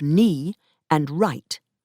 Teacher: the k and the w at the beginning of knee and right were lost.